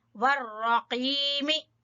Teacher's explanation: रा को पूर और कौफ जुबान की जड़ से